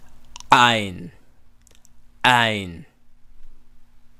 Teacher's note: So it's a slight pause and then you hear the vowel